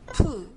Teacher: 뿌, Another fortis. Pu 푸, makes much stronger and breathy sound than mu and boo.